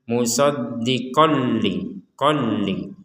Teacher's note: Di sini ada tanwin bertemu lam, maka kita membacanya dimasukkan. Jadi dimasukkan tanwin ini kepada huruf lam. Jadi tidak dibaca jelas ya.